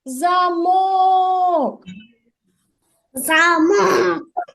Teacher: з більшою силою голосу Перший чи другий замок замок другий правильно другий склад вимовляється з більшою силою голосу